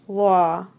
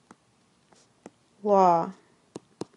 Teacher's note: This sound is the one that sounds similar to the a sound but it's made by raising your jaw and rounding your lips a bit. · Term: open-o